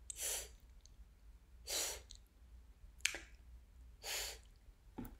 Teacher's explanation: of a finger and it's centered behind your own front teeth it is narrow focused it feels thin clean pristine you shouldn't feel any air on the sides of your mouth